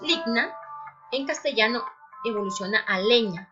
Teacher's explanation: En el latín tenemos ligna, en castellano evoluciona a leña. Aquí encontramos una palatalización, yod segunda, GN, que da a ñ.